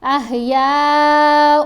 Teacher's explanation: حمزہ کو جب واؤ سے ملانا ہے تو غنہ کرتے ہوئے احیاء، آواز ناک میں گئی نا، اور اس کو ہم ایک حرکت کے برابر ٹھہر کر پڑھ رہے ہیں